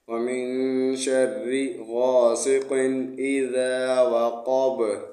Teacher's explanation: با وقف میں ساکن پڑھیں گے تبھی قلقلہ ہوگا